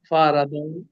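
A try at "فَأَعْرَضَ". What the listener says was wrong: ना देखिए फारदा, ऐन को भी पढ़िए साथ।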